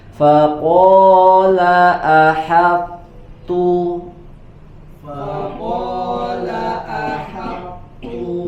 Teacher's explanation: di huruf ha harus berhati-hati tidak dibaca dengan tebal